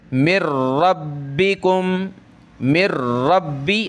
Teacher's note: حرف آیا جس پر یہ تشدید ہے، تو وہاں ہم نے نون ساکن کو نہیں پڑھنا ہوتا، چھوڑ دینا ہوتا ہے، میم کو ملائیں گے را کے ساتھ